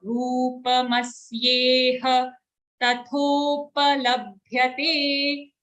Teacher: rupa is ru dirgha and then full pa sound